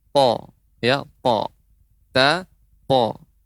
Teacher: Ta po, tapi sifatnya berbeda. Ta sifatnya istifal, po sifatnya isti'la, tebal.